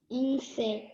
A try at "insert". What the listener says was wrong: It's not insect, it's insert.